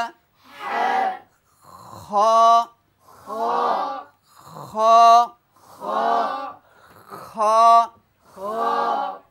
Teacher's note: এটা হামসের হরফ, এই জন্য এই খয়ের মধ্যে বাতাস বের হবে